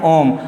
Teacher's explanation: जिसको बोलने में मूल स्वर का तिगुना समय लगता है। आ कहने से आ कहने से दुगना समय लगा, ओम कहने से मूल स्वर का तिगुना समय जिसमें लगता है बच्चों, उसे क्या कहते हैं, उसे पुलुत स्वर कहते हैं।